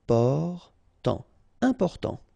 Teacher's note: you've got this EM, and after that it's a consonant, so it is here nasal. Important.